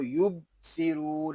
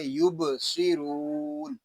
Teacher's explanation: با ساکن ہے، اس میں کلکلا خوب ظاہر کریں گے